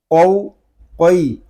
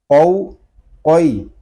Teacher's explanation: یہ قاف جو ہے یہ زبان کی جڑ اور تالو کے نرم حصے سے ادا ہوتا ہے۔ حلق کے درمیان گوشت کا چھوٹا سا جو ٹکڑا لٹک رہا ہے اس سے ٹکرا کر اس کی آواز نکلے گی، قو قوی۔